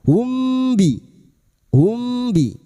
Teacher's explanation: Nahum bidzunubihim, humbi biasanya mim sukun dibaca jelas, namun kali ini bertemu ba, mim sukun bertemu ba ikfa syafawi, mim sukun dibaca samar dan mendengung selama 3 harokat. Humbi, hum bi, dan siap membunyikan huruf ba.